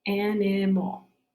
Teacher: that's the last syllable, and it's not stressed, so I have a schwa sound, so that's an A-L.